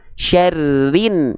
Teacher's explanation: Syarrin. Jadi ro-nya di sini cukup dibaca satu harokat, langsung diidghamkan, langsung dimasukkan ke huruf yang ada tanda tasydidnya di sini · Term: alif lam syamsiyah